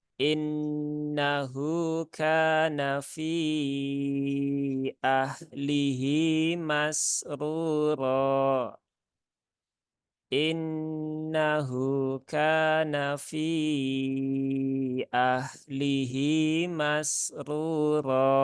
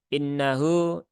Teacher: Nun yang bertasydid, maka tunaikan gunnahnya, tunaikan taronumnya, sempurnakan ya. Ditahan 3 harokat ya. Jadi jangan terburu-buru ketika membaca gunnah. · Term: gunnah musyaddadah